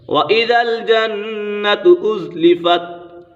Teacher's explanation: نون مشدد ہے، نون مشدد میں ہمیشہ غنہ ہوتا ہے